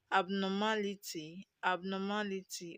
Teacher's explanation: Now we have a word that ends with ty. The stress is on the anti-penultimate syllable, which is the third syllable